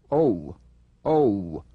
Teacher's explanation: open big enough for a number two position, then follow through with a quick glide into the number one. Oh, oh. Feel the lips change position.